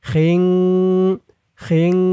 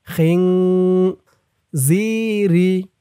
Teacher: ইকফা গুন্নাটা নাকের ভিতর থেকে আসবে